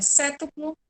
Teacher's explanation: A sílaba tônica, certo? É a antepenúltima.